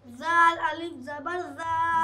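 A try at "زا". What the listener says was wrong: ज़ाल नहीं है, ज़ा है,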